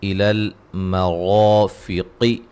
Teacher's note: را کو موٹا ادا کریں گے